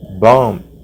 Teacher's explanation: Não sai o B final.